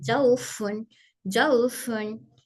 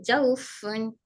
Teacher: मेरे होठ एकदम नीचे टच हो रहे